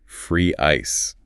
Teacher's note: Smiling lips. Y I glide.